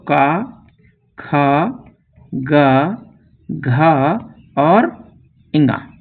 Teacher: का वर्ग के जितने भी वर्ण होते हैं वो कंठ से उच्चारित होते हैं।